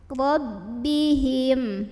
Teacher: ra-nya ini dibunyikan secara tafkhim karena ra-nya barisnya di atas fathah, maka bacanya tebal. Rabbihim.